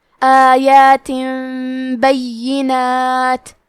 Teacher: قلب کا معنی ہے بدل دینا تو ہم تنوین ساکن کو ہلکی میم میں بدل کے اور غنہ کے ساتھ یہ حکم کو ادا کریں گے